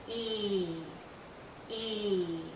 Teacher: our lips are very spread very pulled out and this is a long vowel sound so think of your lips being pulled out like the vowel · being pulled out because it's a long sound e e e our tongue is generally High our mouth is closed again our lips are pulled and there's a lot of tension in this vowel sound tension means tight you feel it here in your cheeks and